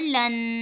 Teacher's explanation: لام دو زبر لن، یہاں پہ غنہ ایک الف کی مقدار